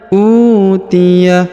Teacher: yang ini yang kedua terdapat tanda Alif ya Wa Amma Uya huruf u dipanjangkan dua harakat karena di depannya terdapat wau sukun